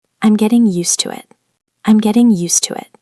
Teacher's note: The stress is on used.